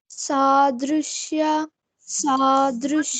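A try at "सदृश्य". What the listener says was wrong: Yeah, don't open your mouth. It's not ya, it's ya. I don't want you to prolong all the sounds. There is a short sound, there is a long sound.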